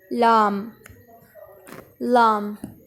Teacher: زبان کی کروٹ کے اخیر سے زبان کی نوک تک کے حصہ سے جب وہ اوپر کے اگلے 4 دانتوں کے مسوڑوں سے لگے۔ جب زبان آپ باہر نکالتے ہیں تو یہاں پہ نوک ہوتی ہے، اور یہ اوپر والے جو دانت ہیں 4، ان دانتوں کے ساتھ آپ کی زبان کی نوک لگنی چاہیے مسوڑوں کے ساتھ۔